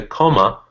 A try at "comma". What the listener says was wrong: So the deal is that it's not actually pronounced comma. pronounced comma. It's unstressed and it becomes this. The way you do that schwa is kind of if you put your mouth just in a neutral position, like you're not speaking, it's just open because you're breathing,